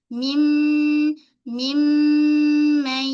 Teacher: sempurnakan kejelasan mim bunyi ghunnah dia dua harakat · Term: ghunnah akmal